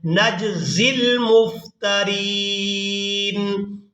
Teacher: جب زا کو ادا کریں گے تو سیٹی کی مثل آواز پیدا ہوگی